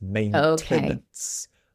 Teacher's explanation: The pronunciation in the UK, in British English, we do pronounce the T. So it's maintenance.